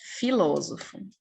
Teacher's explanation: É a palavra que tem como sílaba tônica a antepenúltima, que é exatamente o que é filósofo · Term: proparoxítona